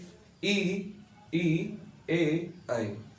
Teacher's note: अग्र स्वर क्या होते हैं कि जो जिह्वा के अग्र भाग से बोले जाते हैं